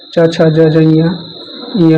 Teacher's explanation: तालव्य में तालु से बोलते हैं, जैसे च वर्ग आता है